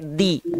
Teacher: kalau gigit nanti sifatnya jadi syiddah jadi kayak suaranya kayak tertahan